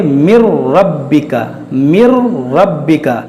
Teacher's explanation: और रा और लाम में गुन्ना नहीं करेंगे